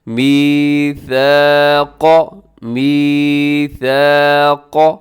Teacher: یہاں ثا میں سیٹی نہیں ہے اور آگے قاف کو موٹا رکھیے گا۔ میثاق، میثاق، قاف کو لمبا بھی نہیں کرنا کیونکہ قاف کے اوپر صرف زبر ہے۔